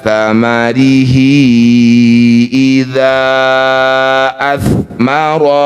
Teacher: Hi yang bertanda layar panjangkan 5 harokat. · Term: matsilah tawilah